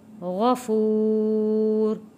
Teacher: غین کو موٹا پڑا ہے، یہاں پہ واو ساکن سے پہلے پیش ہے، حروف مدہ ہے، تو ایک الف کے برابر کھینچ کر پڑھیں گے۔ غفور۔ جب وقف میں حروف مدہ کو ہم وقف کرتے ہیں تو اس کے مقدار کھینچنے کی تقریباً 2 سے 3 الف کے برابر ہو جاتی ہے، کیونکہ یہاں پہ وقف میں آ رہا ہے حروف مدہ۔